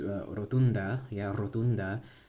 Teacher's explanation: R, it's not the retroflex, or that retroflex R that the Americans have when they speak English. It's a rolled R.